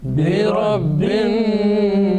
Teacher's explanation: Now remember, this is a, you know, the nasal sound. You are making gunna here on annas. This is, you know, it is a vibration in your nose pipe, the sound waves.